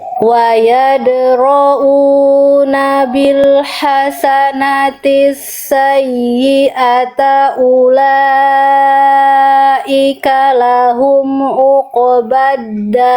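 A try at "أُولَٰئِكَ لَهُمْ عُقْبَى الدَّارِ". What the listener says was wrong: Ainnya kurang terperhatikan, tekan, kurang ditekan, kurang duduk di makhrajnya, ya. Ulaika lahum tekan dulu, uqbaddar. Akhirnya kurang neken Bun. Maksudnya kurang bunyi. Jadi bunyinya agak samar-samar gitu. Nah, bunyi ainnya sekuat itu harusnya. A'udzu.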